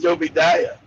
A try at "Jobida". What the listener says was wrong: It's Jobida, not Jobidaya. It's Jobida. That is the issue because people always have a hard time pronouncing Jobida. It is Jobida. Jobida.